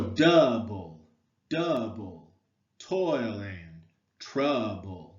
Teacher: notice how double the stress syllable comes first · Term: Troy